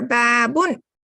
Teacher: little bit long must so this is a long vowel here there's a fatha followed by alif so you make the sound a little bit longer